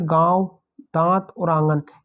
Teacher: हवा जो नाक और मुंह दोनों से निकलते है अनुनासिक में दोनों से निकलते है और चंद्रबिंदु है चंद्रबिंदु याणुनासिक